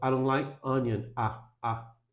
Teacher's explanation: O I vira um A, praticamente.